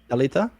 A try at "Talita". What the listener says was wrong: I mean, your L is still kind of like you're speaking English, so it's kind of hard. Talita.